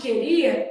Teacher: eu tenho o i a que estão formando aqui um iato